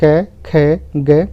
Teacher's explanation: हमारी प्राणवायु या श्वास वायु कंठ से टकराती है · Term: क वर्ग